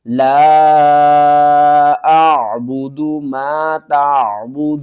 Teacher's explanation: وقف کی صورت میں نون کو ساکن کر دیں گے